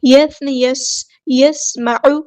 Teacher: سین کی سیٹی ہم نے واضح کرنی ہے